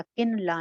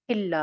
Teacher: में से, तो लिहाजा किन ला नहीं होगा, किल्ला हो जाएगा, इदगाम हो गया बगैर गुन्ना के